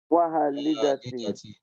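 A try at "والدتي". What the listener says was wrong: Don't put, you are putting Hamza. You are putting Hamza. There's not Hamza, it's Alif. There's a difference between wa'a leader, wa'a. It is not wa'a. It is not wa'a lidati. It is wali wa lidati. Wa lidati. Yes, you are elongating it. Elongation.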